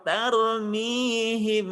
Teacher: nggak boleh kepanjangan, cukup 2 harokat.